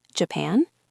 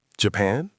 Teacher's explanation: Your voice must go up at the end to show you are surprised or interested. If you just say Japan with a flat voice, it sounds like you are bored. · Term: intonation